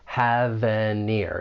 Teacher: We can link them together, those final consonant sounds, with the beginning vowel sound. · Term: linking